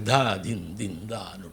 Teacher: Whereas North Indian, they use more aspirated syllables like da, din, din, da.